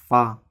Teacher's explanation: فا کا مخرج ہے نیچے کی ہونٹ کی تری اور ثنایا علیہ کا کنارہ۔ ثنایا علیہ کا کنارہ اور نیچے کے ہونٹوں کی تری کا حصہ سے ادا ہوتا ہے فا۔